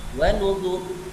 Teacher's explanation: ada kalimat yang dibaca tafkhim, ro yang sukun, sebelumnya ada huruf yang berharakat dhammah